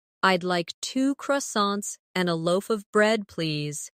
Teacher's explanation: In connected speech, loaf of sounds like loaf a.